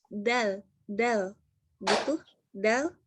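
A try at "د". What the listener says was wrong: Belum, itu D masih. Dal. Itu dal. Ingat, ini gigi seri atas. Ini gusi. Nah, ke tengah-tengahnya. Nih, ini gigi seri atas, ini gusi. Nah, ke tengah-tengahnya ini.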